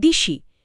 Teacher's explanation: আরেকটা উদাহরণ, দেশি থেকে দিশি, এখানে পরের ই এর টানে আগের এ ধ্বনিটা ই হয়ে গেল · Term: পরাগত স্বরসঙ্গতি